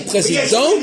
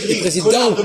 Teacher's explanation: pour l'homme on prononce pas le T pour la femme on prononce le T